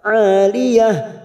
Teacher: Ain fathah diikuti alif 2 harokat